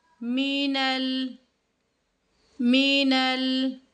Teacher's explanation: جیم کو نون کے ساتھ مضبوطی کے ساتھ ملاتے ہوئے ہم نے یہاں پر غنہ کرنا ہے۔ نون مشدد اور میم مشدد پر ہمیشہ غنہ ہوگا، تو یہاں پر بھی غنہ ہے، یہ میں نے غنے کا نشان لگا دیا ہے۔